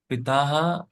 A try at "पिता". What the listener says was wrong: पिता हा नहीं है, पिता।